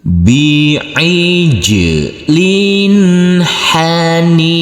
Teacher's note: Huruf jim yang bersukun ini harus kita pantulkan karena ini adalah bacaan qalqalah.